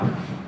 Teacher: Fa ni iaitu hujung gigi gunting bahagian atas kena perut bibir bawah. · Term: huruf fa